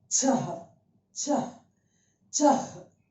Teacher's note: This will have a kind of a her sound when it releases, a half her sound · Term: visarg